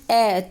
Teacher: जब आप बोलोगे ना अ तो आपको लगेगा कि हां जीभ का जो बीच वाला भाग है वो क्रियाशील है · वह स्वर जिनका जीभ का मध्य भाग क्रियाशील होता है। उसे मध्य स्वर कहते हैं।